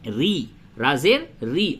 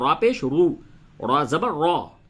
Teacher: جب را پہ زیر ہو تو اسے باریک کر کے پڑھتے ہیں۔ ری، را زیر ری، اور را پیش رو، را زبر را، موٹا کر کے پڑھتے ہیں